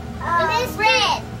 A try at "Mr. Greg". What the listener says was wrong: Fred? Oh, it kind of sounds like Fred. It kind of rhymes with Fred. It actually has the g-g sound. sound. Mr. Greg. Mr. Greg.